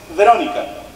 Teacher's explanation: la V se pronuncia con una ligerísima F, como que rozan tus dientes con el labio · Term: labiodental